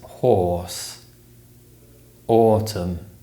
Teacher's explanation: the or sound is produced with the lips strongly rounded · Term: O sound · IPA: /ɔː/, ɔː